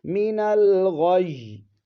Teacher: یا کو جماؤ کے ساتھ ادا کریں گے کیونکہ یا کے اوپر شد ہے